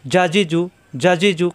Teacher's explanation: জিহ্বার মাঝখানে উপরে তালুতে চাপ দিয়ে